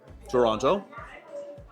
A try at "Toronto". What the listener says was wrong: The pronunciation was wrong. Toronto. They don't have time to pronounce all of the letters in that word. Toronto. If you go to Toronto and you say Toronto, they don't like that.